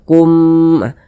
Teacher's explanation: suara itu kita tahan kita panjangkan sejenak sepanjang dua harakat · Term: idgham mimi